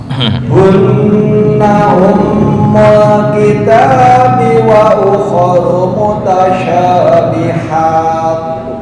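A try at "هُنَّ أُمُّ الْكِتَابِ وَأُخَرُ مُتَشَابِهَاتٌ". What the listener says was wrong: Normal dulu. Itu misal rom kepanjangan. Kepanjangan. Hanya 2 harokat atau 1 alif.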